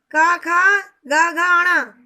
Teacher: ये सब कंठय वर्ण है क्योंकि इनका उच्चारण कंठ स्थान से होता है